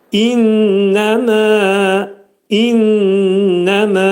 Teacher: Burunda şiddətli sıxılır. Mə uzadılır.